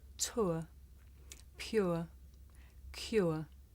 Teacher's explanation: my mouth changed shape from the beginning of the sound to the end